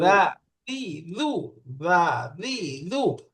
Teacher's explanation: জিহ্বার আগা সামনের দাঁতের উপরের আগার সঙ্গে লাগায়া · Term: দালের মাখরাজ